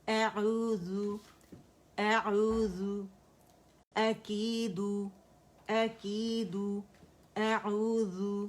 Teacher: عین کو موٹا نہیں کرنا اور نہ حمزہ کو